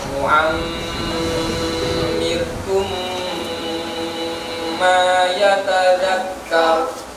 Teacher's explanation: Mim tasdid itu berdengung